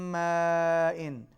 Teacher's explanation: من ماء، میم پر غنہ، بڑی مد ہے، کھینچ کے پڑھیں گے۔